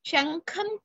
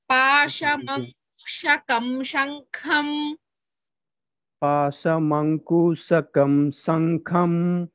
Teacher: शङ्खं खा is mahaprana, whereas पाशमङ्कुशकं का is alpaprana.